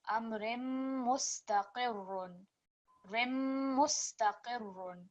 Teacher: It's slightly blacked out, but when joining these two, so you're joining ra with kasratain to mim mushaddad, you want a lot more stress there.